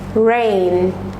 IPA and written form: reɪn (Rain)